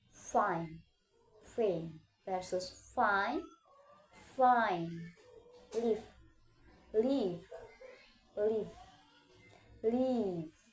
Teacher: Differ in voicing. F is voiceless, V is voiced. Both are labiodental fricative product with the bottom lip and two teeth.